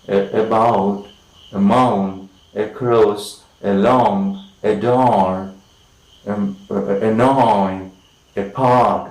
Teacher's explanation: We understand the fact that, okay, this is the weakest syllable, and this is the weakest vowel phoneme, and stress will never fall on this one. It's always silent, like in about, amount, across, along, adore, annoy, apart. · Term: schwa